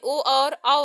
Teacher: उदयतो कंठोष्ठम में ओ और औ आते हैं, जिसका उच्चारण स्थान कंठ ओष्ठ से है।